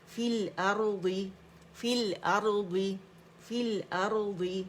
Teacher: فی الارض میں یا اسکپ ہو گیا، فا کسرہ لام کے ساتھ مل گئی